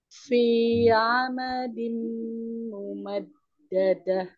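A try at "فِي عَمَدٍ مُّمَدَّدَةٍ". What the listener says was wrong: Huruf A-nya jangan telat yuk. Fi a, bukan fi a, tidak. Fi amadin, coba.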